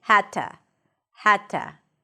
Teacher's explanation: The D turns into a T sound because that's the voiceless version of the D.